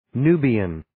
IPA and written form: 'nuːbiːən (Nubian)